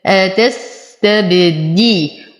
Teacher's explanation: أصبر على السين فهو رخو · أقلقل الباء فهو من حروف قطب جد